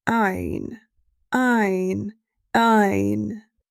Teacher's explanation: Ayn comes from the middle of the throat.